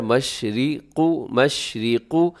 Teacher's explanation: مشرق میں را باریک ہے، قاف موٹا ہے